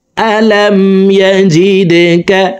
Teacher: দাল কলকলার হরফ নিচের দিকে ধাবিত করে ধাক্কা দিয়ে উচ্চারণ করব